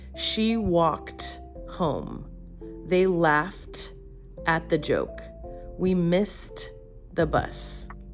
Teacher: T, for voiceless endings. If the verb ends in a voiceless sound like K, P, F, SH, and S, ed sounds like a crisp T.